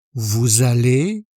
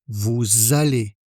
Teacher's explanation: La terminaison se prononce et on fait aussi la liaison.